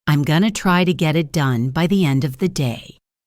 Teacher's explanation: Notice how going to becomes gonna. Try to becomes tryda. Get it becomes get it. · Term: connected speech